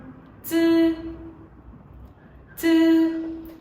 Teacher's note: Thế thì âm này là âm không bật hơi, khi phát âm thì đầu lưỡi thẳng chạm vào mặt trong của hàm răng dưới